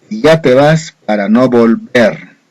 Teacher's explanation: la mayor fuerza de voz en última sílaba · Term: palabra aguda